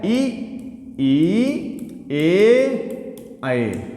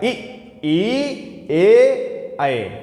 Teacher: जीभ के अग्र भाग से चार वर्णों का उच्चारण हो रहा है